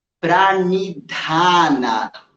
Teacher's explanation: Unido Prani, a gente vai pensar em fazer a postura do arado com a língua, mandando a pontinha da língua lá para o fundo do céu da boca. Então, em vez de falar ni com a língua nos dentes da frente, experimenta falar ni enrolando a língua lá para trás